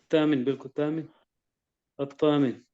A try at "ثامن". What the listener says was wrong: नहीं, ता नहीं, सा। ये 3 नुक्तों वाला।